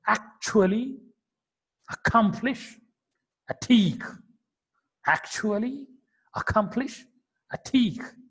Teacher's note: So that k is a little bit aspirated by them and moving towards the pronunciation like Marathi k.